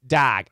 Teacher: in some places they say dag I lost my dog they used a short o